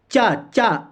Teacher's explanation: चा आपका जाएगा तालू पे, तालू पे जाएगा।